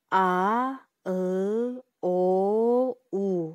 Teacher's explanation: Бул үндүү тыбыштарды айтып жатканда тилибиз артка карай чегинген абалда болот. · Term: Жоон үндүүлөр